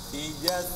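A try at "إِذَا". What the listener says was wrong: Ah, jadi ija. Ya mungkin karena gini ya, kalau huruf zal dan sin itu tempat keluarnya berdekatan. Idhassa, idhassa. Jadi setelah ujung lidah nyentuh ujung gigi siri atas, langsung ujung lidah ke gigi siri bawah.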